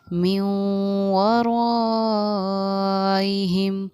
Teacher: غنہ بھی ہوگا اور اخفا بھی ہوگا میم پر